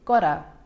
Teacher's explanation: my tongue is just tapping the roof of my mouth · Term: tap T